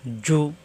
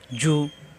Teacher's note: জিম পেশ জু জিব্বার মাঝখানে উপরে তালুতে জু